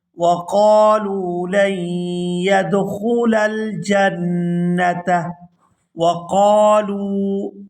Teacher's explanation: یہاں قاف کو الف مدہ کی وجہ سے کھینچ کر ادا کیا جائے گا اور لام کو واو ساکن کے ساتھ ملاتے ہوئے کھینچ کر ادا کریں گے کیونکہ یہ واو مدہ ہے۔